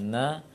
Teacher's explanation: Karena itu ketika membaca nun berharokat bahkan ada sifat gunnah sedikit. Kalau seandainya kita tutup hidung ketika mengucapkan na, maka na tidak akan keluar.